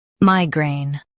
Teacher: Emphasize MAI and keep grain smooth.